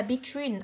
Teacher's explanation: âm thứ hai của cô là âm y dài, trọng âm rơi vào âm tiết thứ hai